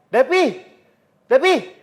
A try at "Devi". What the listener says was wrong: bukan Depi, tapi Devi.